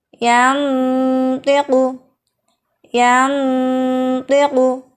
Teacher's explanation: Saat dengung, posisi lidah sudah pada makhraj to, namun tidak menempel atau masih mengambang sehingga samarnya tinggi. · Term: ikhfa aqrab